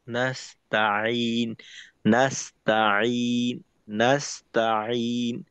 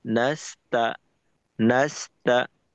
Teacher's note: সিনের শেষে তায়ের মিলনটা একেবারে মসৃণ থাকবে।